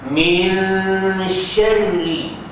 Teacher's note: Apabila ra bersabdu baris bawah, maka dia wajib, yakni ra itu ditarqibkan.